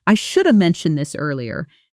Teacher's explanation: Notice should have becomes shoulda.